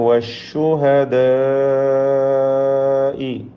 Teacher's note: മദ് മുത്തസിൽ വാജിബ് നൽകി അലിഫിനെ ദീർഘിപ്പിക്കണം 4-5 ഹറക്കത്തിൻ്റെ അളവിൽ.